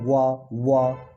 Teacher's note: व इसमें किसका किसका सहारा लेना पड़ रहा है, दांत और ओष्ठ दोनों का सहारा लेना पड़ रहा है।